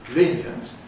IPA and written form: ˈliːnjənt (lenient)